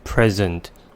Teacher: The word present has 2 syllables. We may put the stress on the first syllable and say present, which means a gift. And we may also put the stress on the second syllable and say present, which means to show, to give, or to introduce something.